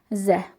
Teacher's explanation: Dilin ucu aşağı kəsici dişlərin ortasına toxundurur. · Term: z səsini